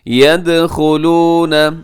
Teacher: اس میں دال ساکن ہے تو دال کی آواز ڈبل ہوگی کیونکہ دال حروف قلقلہ میں ہے